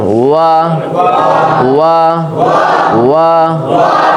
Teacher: তাহলে ওয়াও অক্ষর দুই ঠোঁটের মাঝখানের ফাঁকা থেকে পড়তে হয়